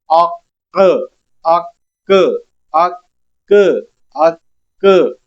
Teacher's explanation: حروف قلقلہ ہے اور ساکن ہو گیا، تو اب یہاں پہ قلقلہ ہم نے ظاہر کرنا ہے، آواز لوٹتی ہوئی محسوس ہو۔